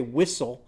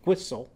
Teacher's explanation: say whistle with the w sound others say whistle with a wh sound